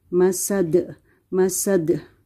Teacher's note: the D here it will become a sukun and it's a kalala letter so we'll do the echo sound